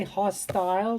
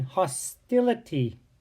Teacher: when you add ity to hostile it changes the long I hostile to a short I in hostility